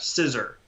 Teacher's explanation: in american english for instance we tend to pronounce that r quite strongly even when it's at the end of a word or after a vowel so you hear that scissor but when you say it scissors